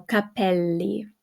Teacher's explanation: we got the double L, so it's held a little bit longer. So capelli.